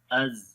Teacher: زا کے اندر صفت جہر ہے، سانس بند ہو جاتا ہے، از. اور رخاوت ہے، آواز جاری ہوتی ہے، از.